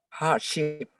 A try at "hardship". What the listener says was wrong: Okay, let's try one more time with the D. Hardship.